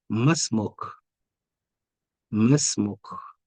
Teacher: because of the Hamza to Wasl, the ma, the prolongation in ma has been neutralized, has been discarded. So anytime Hamza to Wasl comes after a consonant with a prolongation vowel or with al-mad, whether it's mad bil alif or mad bil ya or mad bil wa, you don't have to read the mad.